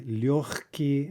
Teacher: that's devoicing in front of the unvoiced consonant